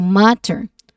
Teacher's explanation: So the stress is on the first syllable, ma.